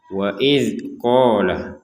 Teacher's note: Sini yang perlu dijelaskan ada kata wa idz, ya, huruf zal sukunnya jangan dipantulkan